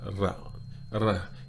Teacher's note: That rap, like all R's in Thai, you can really roll it, rap, or you can just put a little bit of a ra